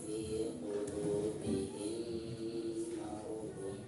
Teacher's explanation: Maka ini dihukumi idgham mimi, dan cara membacanya itu harus diidghamkan atau ditasdidkan ya, serta di 2 harakat ya